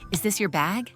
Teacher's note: we use rising intonation when we ask yes, no questions